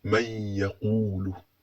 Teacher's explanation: urugero tugiye kureba urugero kuri iyi ya, uri kubona kuri ya hari kubanza nun sukun hagakurikiraho ya, hagahita ubwo ngubwo uhita usoma man yaqulu, ukumva iyo ya urayitsindagiye kandi nta shadda iriho, kubera yuko habanza iriya nun sukun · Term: idgham